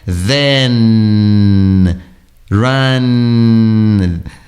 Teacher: no caso do n ele é sempre língua alveolar